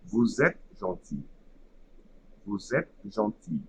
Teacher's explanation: the first word ends with a letter silent S, so it will create an abstract letter Z at the beginning of the second word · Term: liaison